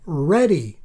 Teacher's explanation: North Americans generally say ready with a flap